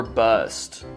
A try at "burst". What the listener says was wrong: It's burst. You said that. You said bust. It's burst.